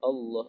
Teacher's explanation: penyebutan Allah itu ketika lamnya itu ujung lidah kita menempel di langit-langit mulut kita. Langit-langit bagian depan mulut kita. Alaisallahu, Allah, dan bibir kita tidak boleh bergerak.